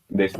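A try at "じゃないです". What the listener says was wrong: Janai desu. Atento, no es desu. ¿Cómo es la pronunciación?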